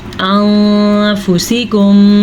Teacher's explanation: نون ساکن کے بعد فا کا آنا اخفا پیدا کرتا ہے